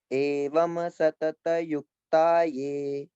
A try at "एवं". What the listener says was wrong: अभी आपने बोला एवं, म नहीं, एवं वम, वम।